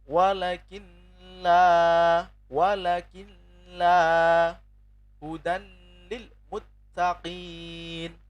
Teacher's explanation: nun sukun atau tanwin bertemu dengan lam ya, itu bi ghairi gunnah, tidak mendengung